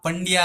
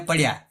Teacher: આ અનુસ્વાર જે છે એ એનું ઉચ્ચારણ સ્થાન નાક છે